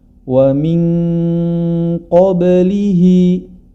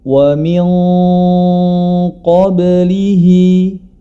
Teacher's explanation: huruf istil'la dan di sini terdapat qof termasuk di dalamnya maka gunahnya kita baca tebal